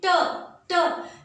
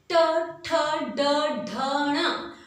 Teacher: दांत की पंक्तियां जहां लगी हैं उसके ऊपर टच कर रही है जिह्वा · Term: मूर्धा